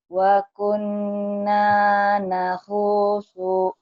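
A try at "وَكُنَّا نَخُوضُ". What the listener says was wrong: Nahudu bukan nahusu. Dot.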